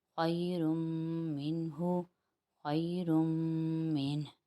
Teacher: تنوین کے بعد پہلا حرف آ گیا میم، اور میم حروف یمون میں سے ہے، اس لیے یہاں پر ہم نے ادغام بالغنہ کیا